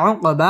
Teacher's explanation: কফ কলকলার হরফ ধাক্কা দিয়ে পড়তে হবে উকবা মদ তবাই একালিফ টেনে পড়তে হবে উকবা হা মদ তবাই